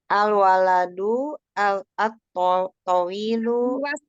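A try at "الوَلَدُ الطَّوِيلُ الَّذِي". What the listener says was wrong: Diwasol jadi langsung disambung ke to-nya. Al-waladu tawilul ladzi tawilul.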